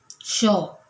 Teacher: आहे तर उष्मे जो आहे ते वायू म्हणजे उष्मे उच्चारताना उच्चारताना त्याचा जो वायू आहे किंवा त्याचा जो श्वास आहे तो मुखावाटेत जोराने उसासा बाहेर टाकल्याप्रमाणे याचा उच्चार होतो